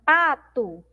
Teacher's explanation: Nós pronunciamos como se tivesse um U aqui no final. Mas nós temos uma letra O.